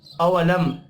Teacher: मीम साकिन के बाद या है, इजहार शफ़ी होगा, गुन्ना नहीं होगा